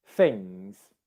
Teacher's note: I'm actually saying a Z sound there, but it sounds a bit like an S sound